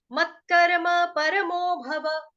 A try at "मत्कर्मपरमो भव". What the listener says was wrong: कर्मानी ना है, मत्कर्म परमो भव। माता जी कर्म, आ के नीचे देखो, आ का डंडा लगा कहीं पे, मात्रा लिखी हुई है आपने कहीं पर।